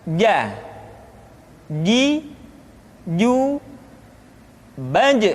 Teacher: dikeluarkan dengan menyentuhkan tengah-tengah lidah dengan langit-langit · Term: huruf ja